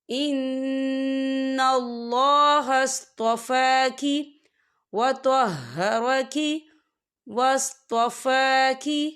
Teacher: فا کے پر کھڑی حرکات ہے، تو ہم اسے 2 یا 3 حرکت کے برابر کھینچ کے پڑھیں گے